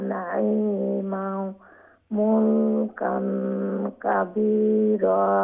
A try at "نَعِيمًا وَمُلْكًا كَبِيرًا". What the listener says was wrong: নাঈমাও ওয়া মুলকান ওয়ার উপর আবার জবর আছে নাঈমাও ওয়া মুলকান কাবীরা